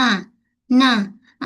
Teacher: Huruf nun makhraj dia hujung lidah. Hujung lidah kita ni menyentuh pada gusi gigi kacip atas